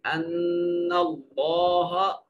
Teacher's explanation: اس سے ماقبل یعنی اس سے پہلے والے حرف کے اوپر زبر ہے تو اس میں جلالت کے لام کو موٹا کر کے پڑھیں گے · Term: مفخم طریقہ